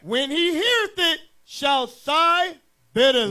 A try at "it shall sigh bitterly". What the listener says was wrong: Now you took the word it out. Come on, somebody, read this right.